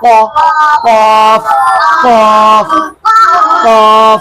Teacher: जबान की जड़ और ऊपर का तालू, जबान की जड़ और ऊपर का तालू, तालू का भी किनारा होता है। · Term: बड़ा काफ